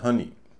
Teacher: इसमें ओ का उच्चारण अ हो रहा है। अ क्या है? छोटा स्वर है।